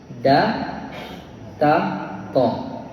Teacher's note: Ujung lidah bertemu belakang gigi atas.